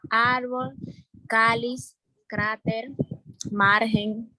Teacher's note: las palabras llanas llevan el acento en la penúltima sílaba